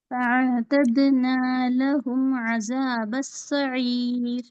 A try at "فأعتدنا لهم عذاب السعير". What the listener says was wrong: جی ذال کا مخرج صحیح لیجیے ذا کا ثم رجعين میں ثا اور عذاب ذال کا مخرج عذاب السعير ٹھیک ہے بارک اللہ فیک آگے سسٹر نسیم احمد آپ یاد کیا سسٹر نسیم احمد